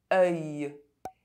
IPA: ɶj